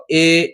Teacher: যৌগিক মানে দুটো স্বর মিলে একটা স্বর তৈরি হয়েছে এ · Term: যৌগিক স্বর